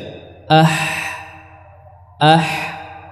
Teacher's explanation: Ha dia tidak sampai merapat atau tidak sampai ee menyentuh dia hanya mendekat saja ah ah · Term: huruf Ha